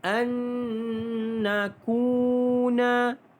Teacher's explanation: ku 2 harakat mad asli huruf waw